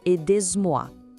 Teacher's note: o Z de aider gruda na palavra moi e isso cria um som de Z entre as duas.